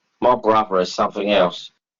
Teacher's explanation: the TH in brother is pronounced V and the TH in something is pronounced F